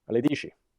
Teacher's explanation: the affricate chi is commonly lenited in Roman Italian to she